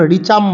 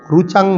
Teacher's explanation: যারা উৎকল উড়িষ্যাবাসী এবং দক্ষিণ ভারতীয় তারা কিন্তু ঋকে রু বলে, মানে ওখানে ঋগ্বেদ প্রধান।